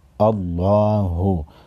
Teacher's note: हमज़ा लाम ज़बर अल्लाम कड़ा ज़बर ला हा पेश हो, अल्लाहु। लफ्ज़ अल्लाह के लाम को मोटा पढ़ेंगे